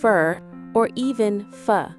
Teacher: So instead of submitted for, it sounds more like subfer. The word for is a function word. So it's reduced to for or even f.